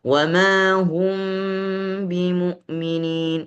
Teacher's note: Mim yang pertama, mim sukun itu disembunyikan ke dalam huruf ba. Sehingga di sini bukan idgham. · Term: ikhfa syafawi